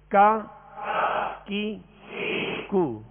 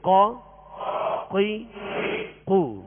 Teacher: فرق یہ ہے کہ کاف کو جو ڈنڈی والا کاف ہوتا ہے اس کو باریک پڑھیں گے، اور قاف جو دو نقطے والا اس کو پر پڑھیں گے، موٹا پڑھیں گے